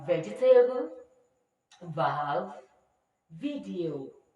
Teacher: the v is the voiced labiodental consonant sound